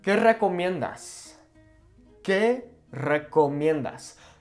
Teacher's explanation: when a word starts with a singular R, we roll it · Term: rolling